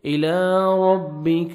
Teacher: الى کھڑے زبر ہے، 1 سیکنڈ لام کو کھینچیں گے. الى ربک، را کو زبر ہے، را کو موٹا کر کے پڑھیں گے، کاف کو باریک پڑھیں گے